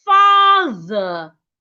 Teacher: So your tongue must be outside when you get to the th.